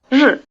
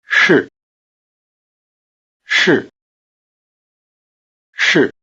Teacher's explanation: The vowel in 是 is just a prolonged R sound.